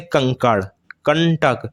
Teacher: जब आप बोलेंगे तो आपका जो नाक से सांस अधिक निकलेगी और मुंह से कम निकलेगी उसे ही हम लोग अनुसार कहते हैं और नासिक चिन्ह जो